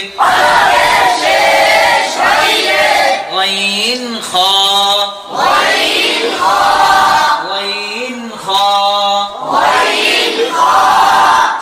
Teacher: 3 নম্বর মাখরাজ হলকের শেষ হইতে